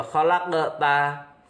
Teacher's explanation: huruf qaf mati di tengah. Kemudian cara membacanya memantul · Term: qalqalah sughra